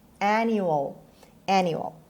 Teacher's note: And the stress is on the first syllable. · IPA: /ˈænjuəl/